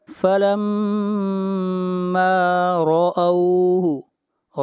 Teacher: فَلَمَّا، لم، میم کے اوپر شد ہے، غنہ ہوگا، میم کو کھینچ کر پڑھیں گے ایک الف کے برابر، فَلَمَّا رَأَوْهُ، را کو موٹا پڑھا جائے گا، را کے اوپر زبر ہے، جہاں بھی را کے اوپر پیش یا زبر ہوگی را کو موٹا پڑھا جائے گا، اور جہاں پر زیر ہوگی را کو باریک پڑھیں گے۔